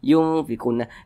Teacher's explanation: panjang ghunahnya itu atau panjang dengungnya itu adalah dua harakat yungfiquun diungnya tu yang yang kita panjangkan yunfi nah di situ